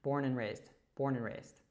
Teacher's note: that and hooks to the N from born, and we kind of drop the D at the end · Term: connected speech